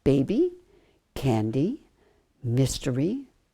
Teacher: schwa sound but there are a large group of words where the Y comes at the end of a word and it is not in the accented syllable and when that happens the Y is going to say e